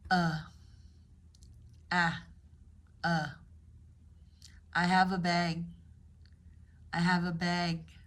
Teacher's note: the relaxed vowel schwa. Your jaw drops midway and the air just comes out.